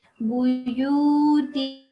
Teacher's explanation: This is the nasalization of noon. So 2 seconds nasalization.